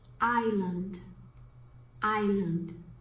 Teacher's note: O S é mudo, realmente, o S é mudo. O S de algumas palavras é mudo.